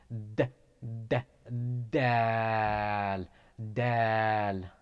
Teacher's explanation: It is pronounced from the tip of the tongue towards upper incisors.